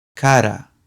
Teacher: The weak R sounds like the double D in ladder.